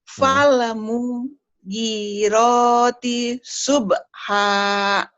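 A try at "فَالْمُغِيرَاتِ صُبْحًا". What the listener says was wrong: Fal mugi panjang. Fal mugirati subha. Rohnya panjang, ada baris berdiri di atasnya. Ini mad asli. G-nya panjang, rohnya panjang.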